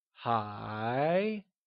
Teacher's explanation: said with a mid rising tone , like Hái